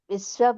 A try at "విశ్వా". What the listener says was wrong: విశ్వా ఆ విశ్వా దీర్ఘం చెప్పాలి ఇదొక్కటి